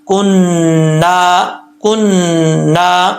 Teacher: کننا کے نون کے اوپر شد ہے، اس میں ایک الف کی مقدار غنہ کرنا ہے